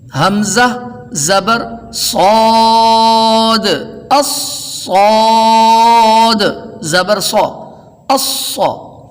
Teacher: صاد کے ہجے کرتے وقت آخر پہ دال کا قلقلہ واضح ہوا ہوگا